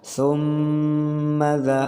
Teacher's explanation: Nah, penahanan atau yang disebut gunnah harus ditahan 3 harokat.